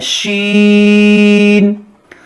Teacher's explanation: دیکھیے آپ محسوس کیجئے اس کا مخرج ہے زبان کے بیچوں بیچ اور اوپر کا جو تالو ہوتا ہے زبان کے اوپر, بیچ زبان بیچ تالو سے ادا ہوتا ہے شین